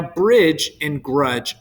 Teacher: They have that j sound at the end, but they don't share the same vowel sound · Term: slant rhyme